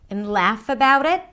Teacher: When the T is between two vowels, it becomes a flap T, so it sounds closer to a D. And laugh about it.